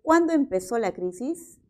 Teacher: por lo tanto su tono final es descendente